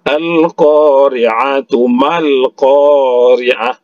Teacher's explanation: Kalau dia wakaf Al-Qari'ah berbunyi huruf H. Kalau dia wasol berbunyi huruf ta. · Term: ta marbutoh